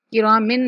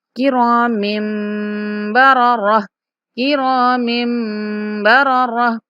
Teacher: جب بھی نون ساکن یا تنوین کے بعد با آ جاتا ہے تو ہم نے وہاں نون کی جو آواز ہوتی ہے اس کو میم سے بدل کر پڑھنا ہوتا ہے۔ یہاں تنوین کے بعد با آ رہا ہے تو ہم نے تنوین کا جو نون ہے اس کو میم سے بدل کر پڑھنا ہے۔